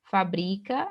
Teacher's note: É o bri aqui, que é a sílaba tônica, paroxítona terminada em A, não acentuado.